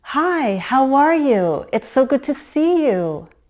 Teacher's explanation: a rise-fall in a very friendly greeting